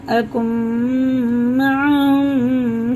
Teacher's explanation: نون ساکن کے بعد میم آ رہا ہے، میم پہ شد ہے، یہ بھی غنہ کر کے پڑھتے ہیں